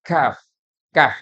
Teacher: Kaf keluar dari pangkal lidah bertemu dengan langit langit berdaging dan langit-langit bertulang